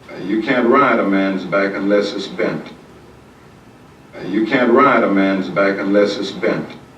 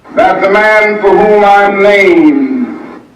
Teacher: he consistently raised his A before nasals more than he did any other A, any other A vowels. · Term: raised A